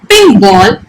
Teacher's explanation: both are equally stressed